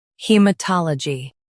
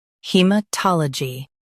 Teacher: In the US, stress ta. In the UK, stress tol.